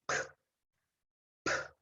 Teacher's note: If you look, I mean, if not look, if you, the last sound is p, p. You move your lips and that's it. So no vibration here.